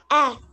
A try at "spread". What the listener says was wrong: Eh. Bravo.